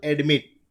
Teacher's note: ટી ઉપર ભાર આવે છે, સ્ટ્રેસ થાય છે